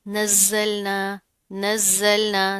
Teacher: जा के ऊपर तशदीद है, सख्ती से जमा कर पढ़ेंगे